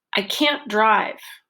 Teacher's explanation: drive is the main verb of the sentence, and that's our focus word here.